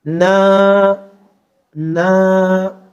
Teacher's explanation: اگلا کلمہ دیکھیے، نون کے اوپر زبر نہ، اس کے بعد الف مدہ، تو اس نون کی آواز کو ذرا کھینچ دیں گے